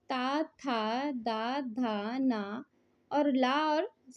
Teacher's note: दंत और जीभ के स्पर्श से बोले जाने वाले क्या कहलाते हैं? दंत कहलाते हैं। इसके अंतर्गत ता वर्ग आता है।